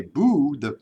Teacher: when you say boo the tongue moves back in your mouth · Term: back vowel